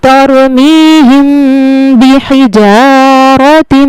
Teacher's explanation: اب جو یہاں پہ قاعدہ ہوگا اس جگہ پہ ہوگا میم ساکن کا اخفا، یہاں پہ ہم نے غنہ کے ساتھ اخفا کرنا ہے، ناک میں تھوڑی دیر آواز کو چھپانا ہے،